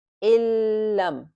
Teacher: complete merging but without any nasal sound